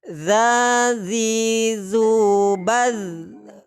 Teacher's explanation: ujung lidah dengan ujung gigi seri atas sifatnya jahar dan ini bukan Qalqalah